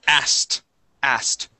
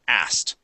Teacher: we don't pronounce that K we go straight to the T